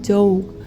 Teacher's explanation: The phoneme in the words of the lexical set lot often has a diphthongal realization in Texan English, so that the word dog is pronounced dog, often written informally as dog.